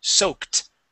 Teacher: when the word sounds like a K sound, like soak, that ED is a T, soaked. Soaked.